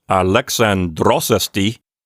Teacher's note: So Alexandros has its accent on its second syllable, but then esti gave away its accent to Alexandros, and that ends up on the final syllable of the word.